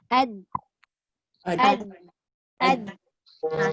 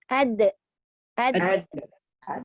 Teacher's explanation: Sifat tunggal dia istitalah kan? Jadi ketika kita menyebut dal tu, kita tahankan suara dan udara. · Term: qalqalah